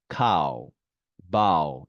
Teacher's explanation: 자, 그래서 이렇게 오우 발음은 이렇게 날 수 있다는 거 확인하시고요. 자, 오 다음에 W가 왔어요. 보통은 아우로 납니다.